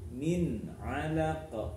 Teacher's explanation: nun sukun bertemu ain. Contoh dari izhar halfi, jadi harus jelas, ya.